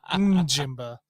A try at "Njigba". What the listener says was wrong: I think you did the N and then the B.